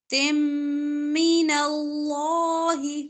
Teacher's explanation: لام موٹا ہوگا زبر اس سے پہلے